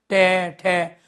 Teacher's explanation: इनका उच्चारण मूर्धन्य से तो होता ही है लेकिन ये वाइब्रेशन करते हैं। वाइब्रेट हैं ये। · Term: कर्कश या कठोर वर्ण